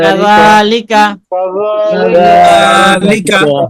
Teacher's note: যালিকা, আপনার জালটা হয় না এখানে, সিটি হবে না, একদম নরম হবে, নরম